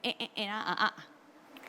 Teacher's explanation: va a sacar el sonido de acá de la garganta que se llama golpe glótico